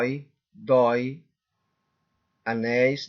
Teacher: É sílaba tônica, é uma oxítona. Na última sílaba, a palavra tá mais forte